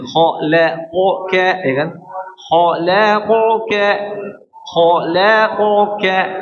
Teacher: Empat huruf ini tebal tipis tebal tipis.